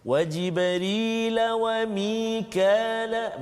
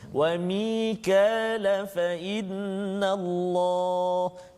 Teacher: Kalau saya sambungkan bacaan, dia jadi mat asli 2 harakat saja.